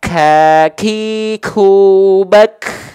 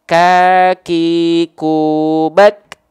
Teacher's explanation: huruf Kaf dia punya sifat namanya adalah hams tapi dia bukan mengalir nafas ya tapi hanya berupa percikan-percikan nafas saja kalau dia lebih dari kadar percikan maka dia disebutnya takaluf takaluf